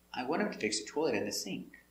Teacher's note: So this is a positive idea, affirmative. The intonation goes down at the end.